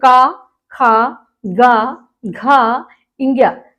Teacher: हमारे कंठ से निकल रहा है मुंह का कोई रोल नहीं है बस मुंह खुल रहा है